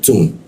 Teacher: ujung lidah bertemu gigi